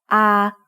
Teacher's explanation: sara ah is a long vowel that makes the sound ah like the a in father